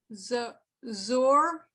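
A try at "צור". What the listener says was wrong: Almost. It's a tsa.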